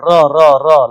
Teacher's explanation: उच्चारण में सांस जो है वह जीभ से टकराकर लुढ़कती सी लगती है। र लगता है कि आवाज लुढ़क रही हो तो इसलिए उसको कहते हैं लुंठित और पार्श्विक जो पीछे से आए तो वो है लौ। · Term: लुंठित व्यंजन